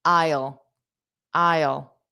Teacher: And then that dark L isle. Isle. Two sounds.